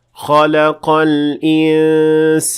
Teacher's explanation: The first one is correct since the sin is an empty mouth letter, so the ghunnah has to be empty mouth as well.